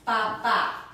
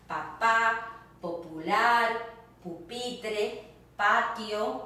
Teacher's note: P, just like in English, but you don't do the puff of air when you pronounce it, as in the word papa, dad.